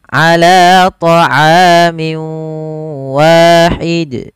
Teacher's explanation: Pada lafal ala, la kita panjangkan sepanjang 2 harakat karena dia mad tabi'i, ada fathah bertemu alif